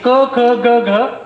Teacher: मागच्या जो टाळू आहे आपला त्याला मागची जीभ लागते